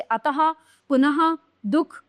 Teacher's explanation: इनका उच्चारण हल्के से ह वर्ण की भांति होता है। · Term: विसर्ग